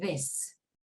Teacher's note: of the mouth like Sam but there is more vibration this the tongue is pressed against the edge of the Upper Front Teeth slight air should Escape as in the word this so say the as in this